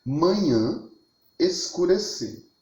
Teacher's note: Nessa palavra manhã, o A pertence à sílaba tônica.